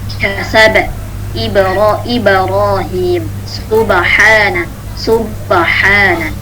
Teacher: jadi pantulannya ini adalah condong ke harokat fathah. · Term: qalqalah